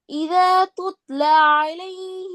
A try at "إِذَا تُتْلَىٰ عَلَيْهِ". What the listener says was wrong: துத்ல பிழை. பிழை. துத்ல என்று வரக்கூடாது.